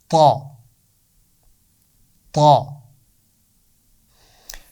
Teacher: زبان کی نوک اوپر والے دانتوں کے پیچھے لگائیں اور اس کی آواز نکلے گی، آواز کو موٹا کرتے ہوئے، جیسے میں نے وا کے لیے بتایا تھا۔